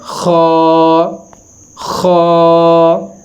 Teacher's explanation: دیکھیں، فرض کریں جب انسان بھاگتا ہے، بھاگنے کے بعد جب انسان کا سانس ایک دفعہ باہر کی طرف آتا ہے اندر سے، وہی ہم نے آواز ظاہر کرنی ہے۔ خا، ہونٹوں کو گول کر کے اس کو ذرا موٹا ادا کرنا ہے۔